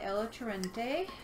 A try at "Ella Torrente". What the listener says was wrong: Torrente. gotta roll your R's maybe, but